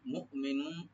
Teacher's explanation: মিমের পরে যে হামজা এখানে রাইট দিতে হবে, শুধু গলার শেষ থেকে আনবেন, কিন্তু যেন ইকো না হয় বা কলকলা না হয়। মু, মু, এরকম না।